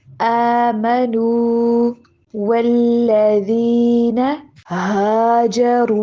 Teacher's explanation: نو والی آواز ناک میں نہیں جانی چاہیے. آمنوا والذین ہاجروا، واو کو دونوں ہونٹوں سے ادا کرنا ہے، اوپر والے دانت اور نیچے والا لپ استعمال نہیں کرنا ہے، بلکہ ہونٹوں کو گول کرنے سے ادا ہوتا ہے